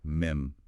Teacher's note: You close your mouth. It's a closing, humming sound, what is called guna in the recitation rules. It settles into silence.